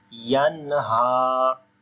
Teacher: After the noon sakin, the next letter is throttle letter. We make izhar sound here like the clear sound of noon. So we say yanha without gunna.